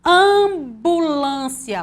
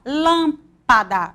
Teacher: as letras MP e MB quando são usadas em sequência juntinhos elas vão produzir esse som bilabial porque eu vou juntar o lábio superior com lábio inferior